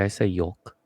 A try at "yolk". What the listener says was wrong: You put that L. You make sure that L is present.